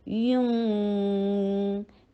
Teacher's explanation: یا کے اوپر ضمہ ہونٹوں کو گول کیا جائے گا اور نون ساکن کے وقت دوبارہ ان کو واپس لیا جائے گا